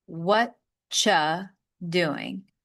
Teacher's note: The are you becomes cha using a ch ya sound.